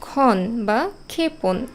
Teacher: শব্দের প্রথমে যখন উচ্চারণ করি যেমন খন বা ক্ষেপণ এখানে শুধু খ এর উচ্চারণ হচ্ছে